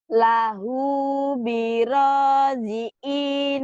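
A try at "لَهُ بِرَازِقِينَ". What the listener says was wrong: Dikin, ini kin. Dikin, nah bukan jiin, dikin.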